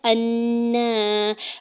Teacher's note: حمزہ کے زبر کو نون مشدد کے ساتھ ملاتے ہوئے نون مشدد پہ غنہ کریں گے، اوپر کھڑی زبر دو حرکت کھینچ کے بھی ادا کریں گے۔